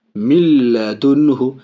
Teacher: نون کا لام کے ساتھ ادغام ہو رہا ہے لیکن ناک میں آواز نہیں جا رہی ہے، غنہ نہیں ہو رہا، بغیر غنہ کے، اس کو تام کہتے ہیں، بلا غنہ بھی کہتے ہیں۔